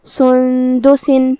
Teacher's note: کلمت سندس میں یہاں نون ساکن ہے پھر حرف دال ہے. دال حروف الاخفاء میں سے ہے تو یہ حکم کو ہم غنہ کے ساتھ ادا کریں گے.